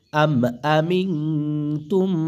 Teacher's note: মিম নুন সাকিনের পরে তা ইকফা গুন্না হবে